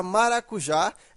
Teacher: Porque ela é uma oxítona. Veja que a sílaba tônica é a última. Então, ela é uma oxítona e ela terminou em A.